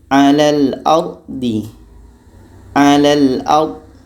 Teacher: Terangkat pangkal lidah kita, tebal bunyinya.